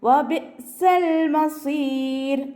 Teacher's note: റോക്ക് സുക്കൂന് മുന്നേയുള്ളതും സുക്കൂന്, അതിൻ്റെ മുന്നേയുള്ള അക്ഷരത്തിന് കെസ്റ വന്നാൽ നമ്മൾ ആ റോനെ താഴ്ത്തിയാണ് ലൈറ്റാക്കിയിട്ടാണ് വഖഫ് ചെയ്യുക. വഖഫ് ചെയ്യുമ്പോൾ ലൈറ്റാക്കിയിട്ട് കൊടുക്കുക.